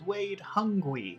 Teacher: they pronounce a w instead of an R